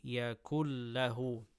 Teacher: The rule is, so instead what we do is we do idgham and we say yakul. We merge the two sounds together and there's no partition, barrier or nothing, no gap you can hear in between.